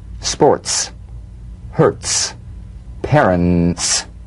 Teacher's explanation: s now put it together use a crisp light staccato treatment feel a crisp percussive hiss between the tip of the tongue and the teeth when the t comes at the end of a word after